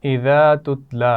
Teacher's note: اذا میں الف مدہ ہے، تتلا لام پر کھڑی زبر ہے، کھینچ کر پڑھیں گے